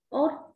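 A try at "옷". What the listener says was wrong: Tập số nặng, ột. Ột.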